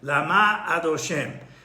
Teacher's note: The emphasis goes from the first syllable to the last syllable. Why? In order that the first syllable, the first letter on the next word, which is either an aleph, het, ayin, is not swallowed up in the process of pronouncing both words. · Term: the emphasis on the last syllable